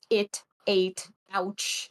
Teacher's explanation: you might have a glottal stop before vowels, like in the words it, ate, ouch, like little ones like that.